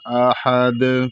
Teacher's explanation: احد، یہاں پر حمزہ ہے تو حمزہ کو حلق سے ادا کیا جائے گا، ادنائے حلق سے، اور ہا کو بھی حلق سے ادا کیا جائے گا، اور دال یہ حروف قلقلہ میں سے ہے، اس لیے جو ہے یہاں پر جب رکیں گے تو قلقلہ کریں گے